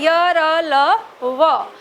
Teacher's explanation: अंतस्थ व्यंजन वे व्यंजन होते हैं जब हम इनका उच्चारण करते हैं तो हमारे मुख में कहीं भी टच नहीं होती जीभ। ध्यान रखना, ये सही बात है, इसलिए भी इनको अंतस्थ व्यंजन कहा जाता है कि जब हम इन चारों व्यंजन का उच्चारण करते हैं तो जीभ हमारी बीच में ही रहकर वाइब्रेट होती है।